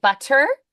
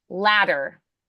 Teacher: So it's a single rapid contact of the tongue tip to that alveolar ridge. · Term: flaps or taps